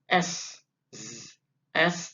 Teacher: Sin tidak kita berikan Getaran yang banyak